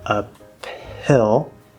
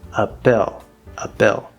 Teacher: it's very common for the H sound to completely disappear if there's a connection that's possible.